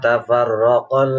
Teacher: ra berharokat fathah, ra tafkhim